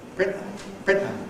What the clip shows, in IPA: ˈprɪnʔə